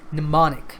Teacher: The M at the beginning of the word is silent.